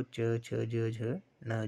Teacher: तालव्य व्यंजन में क्या होता है, जो तालु से जो है वो उन व्यंजनों का उच्चारण होता है